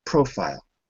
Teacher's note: it's always profile on the first syllable sometimes it changes but here it doesn't